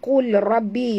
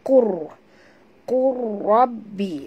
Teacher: Ya, hukumnya di sini idgham mutaqaribain, ya, idgham mutaqaribain, ya, di mana sahabat semua, ya, kita lup, lupakan bunyi lam. Jangan baca qul, kita baca qur. Masukkan qaf ini terus terus ke dalam ra tanpa membunyikan lam.